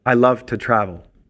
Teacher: when two comes before a verb to form the infinitive the vowel is usually reduced to the short weak sound